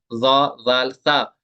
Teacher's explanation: ये होंगे without whistle अदा, ये सीटी के बगैर अदा होंगे।